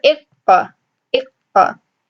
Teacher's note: We know that the makhraj of qaf is the back of the tongue